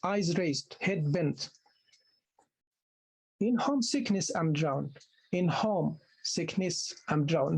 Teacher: You don't put stress on ness of sickness.